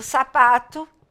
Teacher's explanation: a sílaba tônica é o pa é a penúltima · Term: paroxítonas